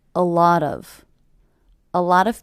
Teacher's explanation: a lot of that's because it's coming between two vowel sounds I also notice that I hear these three words as one unit a lot of a lot of with the stress happening on the middle word